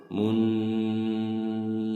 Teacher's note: nun bertasjid ini gunah ya, gunah musyaddadah, jadi ditahan, jadi sambil ada dengungan